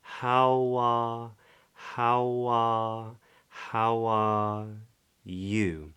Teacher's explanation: we get what's called an intrusive W where the lips release away from their rounded position at the